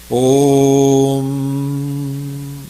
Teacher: Last में म इसकी गुंज रह जाती है।